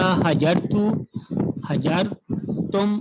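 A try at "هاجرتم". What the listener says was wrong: ہاجرتم. الف، الف کی آواز واضح کریں.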